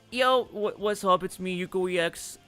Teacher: with my femme voice, larynx raised, lowering my pitch